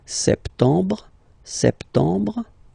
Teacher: Remember this EM en septembre. You don't insist on the final E.